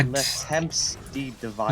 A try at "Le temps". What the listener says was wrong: Le Temps. well, yeah, it is spelled temps, but I thought you were pronouncing the P when you shouldn't.